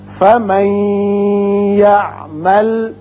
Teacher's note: نون ساکن کے بعد جب یا آتا ہے تو ادغام غننے کے ساتھ کرتے ہیں